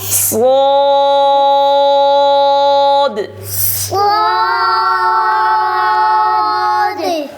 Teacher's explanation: صاد موٹا کرنا ہے, الف بھی موٹا پڑھنا ہے